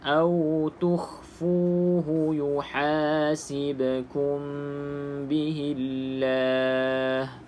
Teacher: pastikan ha dipedaskan. Ha dipedaskan, caranya senyum mulut.